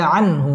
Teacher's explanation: ইজহার গুন্না ছাড়া স্পষ্ট করে পড়তে হবে